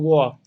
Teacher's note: इसका व का उच्चारण जो है ना दांत और ओठ दोनों मिला के होता है